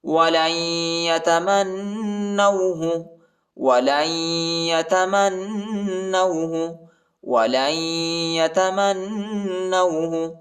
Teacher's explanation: لام کو یا کے ساتھ ملائیں گے، نون نہیں پڑھا جاتا، نون کے اوپر جزم آیا ہے، سکون آیا ہے اور ادھر غنہ بھی کریں گے